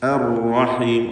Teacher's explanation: റായിന് ഷദ്ദാണ്, തക്രീർ വരാതെ ശ്രദ്ധിക്കണം. അർ എന്ന് വിറയൽ വരരുത്. അർ റഹീം ഒറ്റ റാ ഉച്ചരിക്കുക.